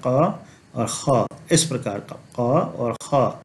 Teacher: इस क और ख को हम कंठ से थोड़ा जिह्वा मूल की तरफ ले जाते हैं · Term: जिह्वा मूल्य